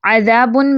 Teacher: ذال light letter ہے تو یہ الف بھی لائٹ پڑھا جائے گا